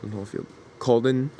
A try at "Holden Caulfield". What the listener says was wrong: No, sorry, it's Holden Caulfield. You're kind of spoonerizing it, so sorry.